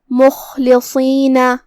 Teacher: صاد کو ہم بھاری آواز میں ادا کریں گے کیونکہ وہ حروف تفخیم میں سے ہے · خاء کو ہم حلق کے اوپر والے حصے سے ادا کریں گے جو کہ وہ حروف تفخیم میں سے ہے تو ہمیں اسے بھاری آواز میں پڑھنا ہے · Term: حرف الخاء